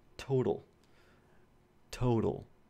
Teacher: The last sound is going to be a velarized L as well. It's occurring at the end of the word.